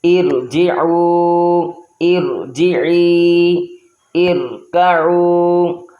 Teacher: عارضی زیر ہے، اس صورت میں بھی ہم نے را کو پر پڑھنا ہے